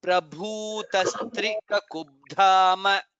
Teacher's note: Bhu is Mahaprana and it is Dirgha.